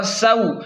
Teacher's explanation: یہاں پر واو لین ہے تو اسے جلدی اور نرمی سے پڑھیں گے اور سین سیٹی کو تیز پڑھیں گے۔